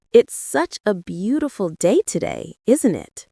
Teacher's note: Notice how the intonation rises at the end, making it sound like a friendly remark.